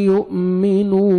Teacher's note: حمزہ کو جزم ہے جھٹکے سے پڑھیں گے واو مد ہے نون کو 1 سیکنڈ کھینچنا ہے یؤمنو باللہ